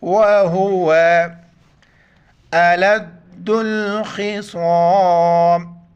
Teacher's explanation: لام کو دال کے ساتھ ملائیں گے, دال پر شد ہے سختی سے پڑھیں گے اس کو